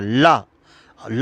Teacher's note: जिस व्यंजन का उच्चारण करते समय वायु दो उच्चारण स्थानों की बगल से निकल जाती है उसे पाश्विक व्यंजन कहते हैं